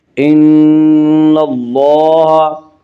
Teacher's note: یہاں اللہ کے لام سے پہلے نون کے اوپر زبر ہے، اس سے اللہ کا لام پر پڑھا جائے گا۔ ان اللہ، لام کے اوپر کھڑا زبر ہے، کھڑا زبر قائم مقام ہے الف کے، اس لیے کھڑا زبر کو 1 الف کے برابر کھینچ کر پڑھیں گے